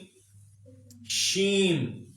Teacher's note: شین پورے منہ میں پھیل جائے گا